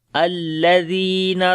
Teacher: زال کو نرم پڑھیں گے، لمبا بھی کریں گے، یا مدہ ہے